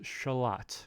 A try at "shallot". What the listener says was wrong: It's like a, not like lut, but let.